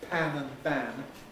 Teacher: the main way in which a pair like pam and bam is distinguished in english presence or absence of aspiration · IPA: pæn bæn